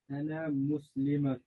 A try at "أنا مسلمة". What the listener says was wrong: Now you can't stop in the middle. Ana muslimatun. Don't say muslima. Muslimatun. They say muslima. Muslimatun. Muslimatun.